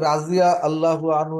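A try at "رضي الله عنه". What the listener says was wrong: হ্যাঁ, রা বলা যাবে না, রজি বলতে হবে, রজি আল্লাহু আনহু।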